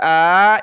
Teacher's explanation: حمزہ کے اوپر کھڑا زبر ہے، اس کو ایک الف کی مقدار میں ہم نے کھینچنا ہے